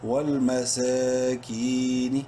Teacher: ولیتم واو لام زبر ول میم زبر ما ولما سین کھڑی زبر سا ایک کے برابر لمبا کرنا ہے سین کو کھڑی زبر کی وجہ سے. کاف یا زیر کی یا مدہ ہے، کاف کو بھی ایک کے برابر لمبا کریں گے